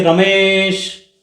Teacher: कोई चिल्लाता है किसी का नाम पुकारता है कि रमेश है ना तो उसको लंबा खींच रहा है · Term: प्लुत स्वर